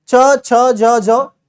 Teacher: हमारे जीभ हमारे तालु से टच होती है। च छ ज झ बिना जीभ को तालु से लगाए आप बोल नहीं सकते। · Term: तालव्य